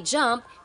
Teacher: there's a combination of a stop and ative sound created by briefly stopping the air flow and then releasing it with friction